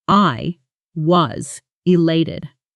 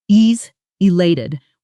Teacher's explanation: in real fast conversation was often gets swallowed almost disappearing into a quick w sound. So it comes out closer to e is elated with the stress landing hard on the lelay sound in elated.